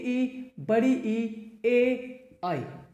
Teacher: ये ऐसे स्वर हैं जिनको बोलने के लिए जीभ के अगले हिस्से का इस्तेमाल करना जरूरी है